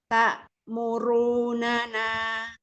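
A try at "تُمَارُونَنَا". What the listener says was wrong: Roknya bisa Ibu. Roknya kasih jarak dulu antara gigi atas dan bawah. Iya, tapi taknya kurang syiddah, Ibu.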